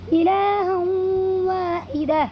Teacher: اس تنوین کی آواز کو واو میں بدل دیں گے اور غنہ کے ساتھ تھوڑا سا ناک میں لے جا کر کے اس کی ادائیگی کریں گے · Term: ادغام ناقص